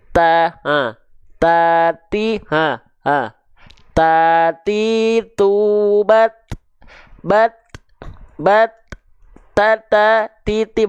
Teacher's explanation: huruf ta itu dilafalkan dari ujung lidah kita sentuhkan ke pangkal gigi seri atas kita.